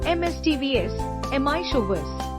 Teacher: it has 3 syllables, not 4. The middle syllable is pronounced ch.